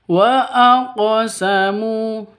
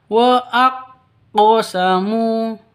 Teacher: qqalah karena di sini qofnya sukun berarti sudah memenuhi syarat untuk disebut dengan qqolah begitu harus dipantulkan cara bacanya wa aqamu cara bacanya seperti itu bukan dibaca waqqosamu